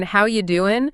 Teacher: Because his famous line, "How you doing?" is just a masterclass in relaxed American intonation. It's not just the words, it's that slow, rising inflection that makes it so iconic.